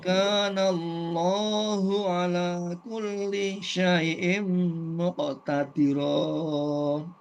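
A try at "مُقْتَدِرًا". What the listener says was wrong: Ya, cepat huruf dalnya masih ada terasa logat-logat bantulnya muqtadira ya. Jangan dimasukkan logat Jawanya ya. Diusahakan posisi makhrajnya itu pas ya.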